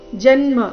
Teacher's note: ಜನ್ಮ ಜ ಮೇಲೆ ಆಘಾತ